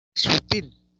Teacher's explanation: sutil, la tónica es til